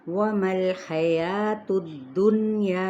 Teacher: نون پہ اخفاء حقیقی ہے اور یا کو ہم 4 حرکت کھینچیں گے لازمی · واو ہونٹوں کی ناتمام گلائی کے ساتھ، جبکہ میم کی زبر کو لام کے ساتھ ملاتے ہوئے اس کو ہلائیں گے نہیں۔